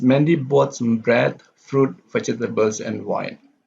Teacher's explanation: We have bread, fruit, and vegetables, and wine going down. So bread, fruit, and vegetables have a sustained intonation.